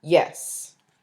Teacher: a word like yes, with falling intonation, expresses detachment, lack of interest, non-involvement